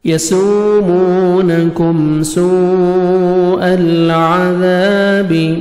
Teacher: یسومونکم سوء العذاب، مد لازم، الف واو یا حروف مدہ جو ہیں، حروف مدہ کے بعد اسی کلمہ میں حمزہ آ جائے تو 4 سے 5 سیکنڈ، 4 سے 5 الف کے برابر مد کرتے ہیں، جس کو مد لازم یا مد واجب کہتے ہیں۔